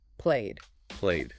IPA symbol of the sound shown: d